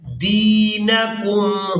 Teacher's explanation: ہم نے دال کو یا مدہ کی وجہ سے کھینچ کر ادا کرنا ہے